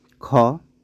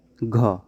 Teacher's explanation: इसमें ज़्यादा प्रयत्न करना पड़ता है, ज़्यादा मुख से हवा निकलती है, तो इसको बोला जाता है महाप्राण व्यंजन।